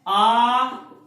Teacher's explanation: इस आ में होठों का प्रयोग नहीं है, मुंह पूरा खुल रहा, लेकिन हम बात कर रहे हैं यहाँ ओष्ठ, ओठ की आकृति से कोई लेन देन नहीं।